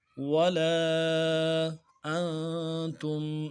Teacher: نون ساکن ہے غنہ کریں گے